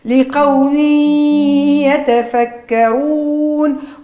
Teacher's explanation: الإدغام مع إبراز الغنة يعني النون ساكنة باش نعوضها بيا ساكنة ونجري معاها صوت الغنة